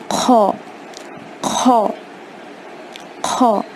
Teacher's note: پھر ہا کے بعد جو خو ہے، خو کو حلق کے اوپری حصے سے ادا کرنا ہے، throat, upper of the throat, وہاں سے ادا کرنا ہے خو۔ یہ ہا جتنا شدت والا نہیں ہوتا، اس سے تھوڑا کم ہوتا ہے، حلق کے اوپری حصے سے ادا ہوتا ہے، upper part of the throat سے ادا ہوگا۔